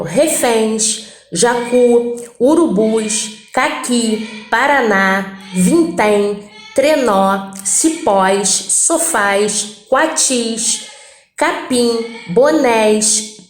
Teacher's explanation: Todas essas palavras, elas têm a última sílaba tônica, tá? Todas essas palavras, a tonicidade, a maior intensidade está na última, tá bom? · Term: oxítonas